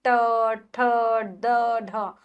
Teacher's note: मूर्धा के द्वारा बोले जाते हैं। यानी कि हमारी जो जीवा है मूर्धा को छूती है। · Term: मूर्धन्य व्यंजन